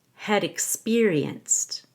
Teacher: of them had experienced the had is not a main verb it's a helping verb so we will reduce the short a to a short e